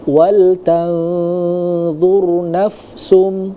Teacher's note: Nah, kemudian tadi di kalimat wal tanzur, ya, wal tanzur ada huruf nun sukun, di depannya ada huruf dha. Nah, maka di sini harus didengungkan dulu, ikhfa namanya